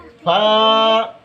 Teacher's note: নিচের ঠোঁটের পেট সামনের উপরের দুই দাঁতের আকারের দিকে লাগাইয়া ফা